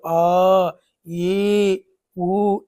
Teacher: దీర్ఘాలు అంటే 2 మాత్రల కాలంలో ఉచ్చరించే అక్షరాలు